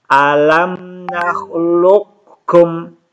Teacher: qaf ketemu kaf. Alam nakhluqkum. Jadi qafnya tidak diqalqalahkan lagi